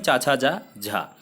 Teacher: तो चा वर्ग में चा छा जा झा, तो ये तालव्य व्यंजन हो जाएंगे